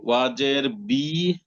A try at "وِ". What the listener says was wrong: ভি না বি না ভাই ওয়াজের ভি ভি সরাসরি ভি না ওয়াজের ভি।